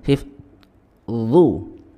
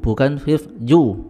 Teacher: Makhraj huruf dha, ya, ini adalah ujung lidah, ya, bertemu dengan ujung gigi seri atas bersamaan dengan huruf tha dan dzal.